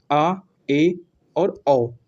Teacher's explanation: अगर आपका मुख केवल आधा खुल रहा है, तो उन्हें क्या बोलेंगे हम, कि वो भैया अर्ध विवृत स्वर होते हैं। देखो देखिए यहाँ पे मुख आधा खुला, तो वो क्या होते हैं, अर्ध विवृत स्वर होते हैं।